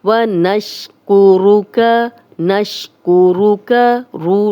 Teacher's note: را پہ پیش ہے، موٹا پڑھیں گے، کا کی زبر کو لمبا ہونے سے بچائیں گے۔